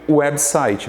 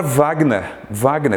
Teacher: Nessa sílaba aqui, web, o E é o mais forte, é a vogal, e o W, no caso, é a semivogal.